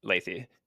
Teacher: There's slight like emphasis on the second syllable, so it's Lethe.